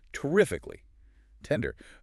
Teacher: In elite British speech, you control the consonants. You have to aspirate the T's so a little puff of air comes out. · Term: aspirated T's